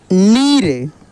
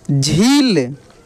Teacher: और वहीं छोटी की मात्रा रहता है तो उसका उच्चारण आराम से करते, ठीक ना, सिंपल तरीक़ा से करते। और बड़ी की मात्रा में जोर लगता है, यानी खींच कर किया जाता है, यानी इसका प्रोनाउंसिएशन लंबा होता है